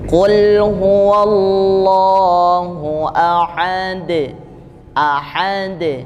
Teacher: sehingga dia terdengar jelas pantulannya ya ya Qul huwallahu ahad ahad pantulannya ada pada punggung ujung lidah di antara di Pangkal dua gigi seri atas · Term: Qalqalah Kubro